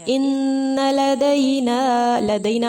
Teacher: مد منفصل ہے، 4 یا 5 حرکات کے برابر لمبا اس کو کھینچ کر پڑھنا ہے